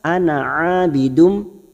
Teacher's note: huruf nun kita baca pendek, bunyinya ana ain fathah diikuti alif 2 harokat